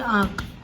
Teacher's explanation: तो आँख में देखो थोड़ा सा हमारी नाक में से भी हवा निकल रही है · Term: अनुनासिक